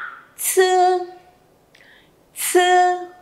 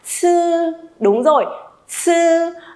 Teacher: Ồ, bật hơi đúng không? Bật hơi hoành tráng, mãnh liệt luôn.